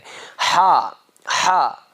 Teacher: تو ہا جو ہے یہ بیچ حلق سے نکلتا ہے